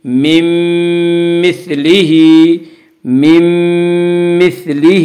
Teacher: میم آ رہا ہے، اس لیے نون ساکن کو میم سے ملا کر غنہ کے ساتھ پڑھیں گے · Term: ادغام مع الغنہ